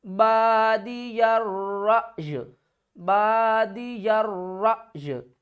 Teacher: وقف کی صورت میں ہم کیا کریں گے کہ حمزہ کو جھٹکا دے کر یا کے ساتھ ملائیں گے